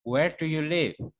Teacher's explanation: Kalimatannya yang diawali dengan kata tanya seperti ini, nada belakangnya itu turun.